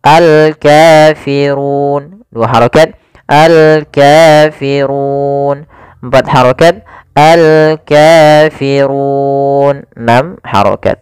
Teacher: Kemudian panjang untuk ru sendiri karena di sini sebelumnya ada huruf mad sebelum huruf yang dimatikan. Ini kita boleh memanjangkan 2 harokat, 4 harokat ataupun 6 harokat. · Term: mad arid lis-sukun